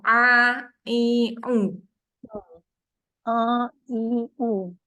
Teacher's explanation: untuk huruf Ain dibaca tekan tengah-tengah kerongkok